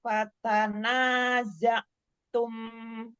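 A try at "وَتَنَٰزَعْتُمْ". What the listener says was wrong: Bukan fa. Watanaza'tum. Bukan fa. Watanaza'tum.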